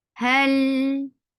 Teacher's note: ha from your last part of your throat. For fatha, open jaws, attach with lam.